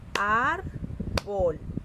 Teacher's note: Ar suena más fuerte. Entonces es una palabra grave. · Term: sílaba tónica